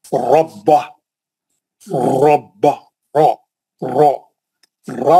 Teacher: मोटा पढ़ना, गोल मुंह से भारी पढ़ना · जब भी रा पे जबर रहेंगे रा मोटा पढ़ेंगे, मुंह भर के पढ़ेंगे, पुर पढ़ेंगे या पेश रहेंगी।